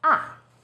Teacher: lower it first steps down then rises ah fourth tone position starts high then falls sharply